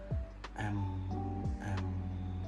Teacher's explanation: Nah itu kan yang keluar tuh dari rungga hidung menyuarakan e dari bibir atas dan bawah yang bertemu yang menutup jadi keluarlah bunyi nasal untuk huruf M